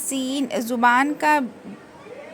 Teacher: زبان کی کونی نیچے کے دو دانتوں کے جڑ میں لگانے سے سین ادا ہوتا ہے، جس میں ہم کو سیٹی کی آواز آئے گی